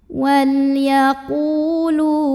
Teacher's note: Wal yaqu mad tabi'i karena ada waw sukun yang didahului baris dhammah. Cara bacanya dipanjangkan qafnya 2 harokat saja.